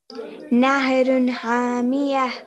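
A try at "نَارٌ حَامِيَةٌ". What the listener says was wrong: ہاں, نہر مت کہیے گا, نارن.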